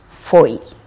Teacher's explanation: E o ditongo fechado? O timbre é fechado.